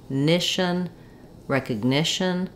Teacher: my main stress now is falling on the ni syllable. So instead of an I sound for this letter I, we have the I, like in it or knit.